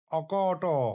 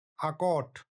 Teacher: এখানে অয়ের উপর শাসাঘাত পড়ায় অ স্বরধ্বনিটি দীর্ঘ আতে পরিণত হয়েছে। আবার দেখুন, একটি শব্দ আছে চলন, যেটি প্রাচীন বাংলায় হয়েছে চালন হিসাবে।